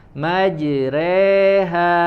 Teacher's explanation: di riwayat Hafs an Asim imalahnya di sini imalah kubro